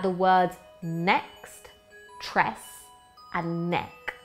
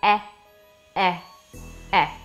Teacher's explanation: they don't rhyme but they all go e e e the vowel sound is the same